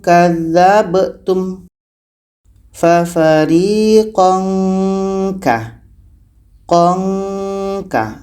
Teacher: ini tanwin bertemu kah ikhfa abad menghasilkan bunyi ng